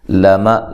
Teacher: لام کو باریک پڑھنا ہے، میم کو بھی باریک، اور کسی کو لمبا نہیں کرنا